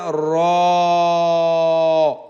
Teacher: জিহ্বার আগার পিঠ তার বরাবর উপরে সঙ্গে লাগাইয়া র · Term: 10 নাম্বার মাখরাজ